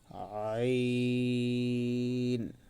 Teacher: আইন, গলাটা একটু চিপায়ে উচ্চারণ করার জন্য চেষ্টা করবো